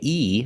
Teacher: mouth a little more when I say e like green beans the mouth is very closed it's more of a closed sound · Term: long e